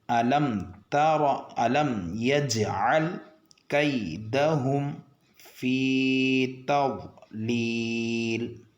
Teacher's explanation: ضاد کو موٹا پڑھنا چاہیے۔ ضاد کو پڑھنے کے چکر میں تا اور لام کو موٹا نہیں پڑھنا چاہیے